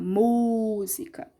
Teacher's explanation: o acento é o acento agudo lá na sílaba tônica, que é o mi.